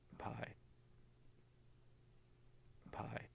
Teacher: You can see the same silence where the lips are closed and the same big waveform for the vowel I, but before the vowel, there's this noisy burst of turbulence. That's the aspiration on the P.